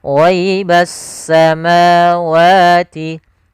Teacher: sehingga langsung diidghamkan ke huruf setelahnya yaitu huruf sin, sehingga langsung di huruf sinnya bertasydid ghaibassa. Jadi S-nya seakan-akan ada dua. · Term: alif lam syamsiyah